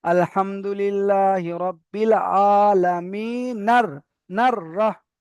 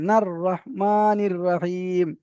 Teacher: নুনটা রার সঙ্গে যুক্ত করে যায় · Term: জুড়ে পড়লে